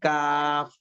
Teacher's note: زبان کی جڑ سے کچھ پہلے کا حصہ اور اوپر کا تعلق، اس سے کاف ادا ہوتا ہے